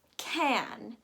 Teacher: So, the A-N, as we discussed, in short words like this, is pronounced can. That A sound is very AY-like and it's very jarring because the stress is on that A.